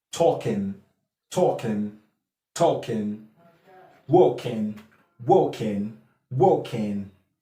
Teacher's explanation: so the um /g/ is not there as in the normal Received standard British pronunciation